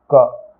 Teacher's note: जब आप क का उच्चारण करेंगे तो आपके अंत में आपका अ आएगा